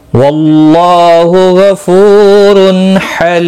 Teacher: حلی لی یا مدہ ہے، ایک الف کے برابر کھینچ کر پڑھیں گے، اور وقف کی صورت میں میم ساکن پڑھا جائے گا، وقف بالاسکان ہوگا۔ مد العارض وقفی ہوگا، 3 سے 5 الف کے برابر کھینچ کر وقف کریں گے